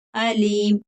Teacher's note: یہاں پر عین کی آواز نہیں نکلے گی حمزہ ہے علیم. علیم اور علیم دونوں میں بہت فرق ہے.